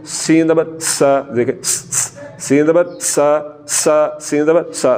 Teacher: तो सीन को पढ़ते हुए सीटी की तरह तेज़ आवाज़ निकालनी है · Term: सीटी की आवाज़